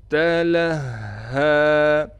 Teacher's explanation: ہا پر تھوڑا ٹھہراؤ کیا جائے گا اور ٹھہراؤ کے ساتھ ہا کو ایک الف کی مقدار کھینچیں گے